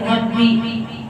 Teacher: را کے اوپر زبر ہے تو را کو پورے یعنی کہ موٹا پڑھیں گے